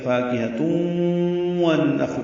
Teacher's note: تنوین کے بعد واو آنے کی وجہ سے ادغام ہوگا، یہ ادغام ناقص ہے، غنہ کریں گے